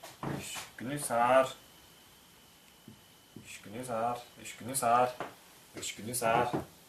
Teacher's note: «С» не переходит в букву «З».